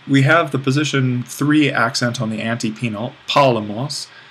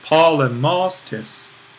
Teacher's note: we have the position 3 accent on the antepenult, polemos. Well, this accent that the tis kind of demands falls on the ultima here.